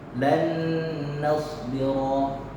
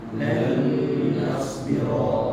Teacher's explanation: Dari idgham bi gunnah, jadi ada dengung.